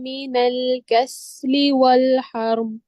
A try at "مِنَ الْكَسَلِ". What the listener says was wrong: اچھا، سین کے اوپر حرکت ہے. ٹھیک ہے، مین الکسلی